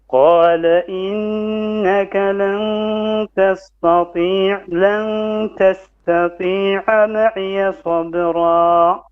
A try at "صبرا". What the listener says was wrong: Make your ra heavy. Don't try to change your mouth when you say ra. Don't say ra. Okay, don't go down to flat. It's ra. Sabra. Sabra.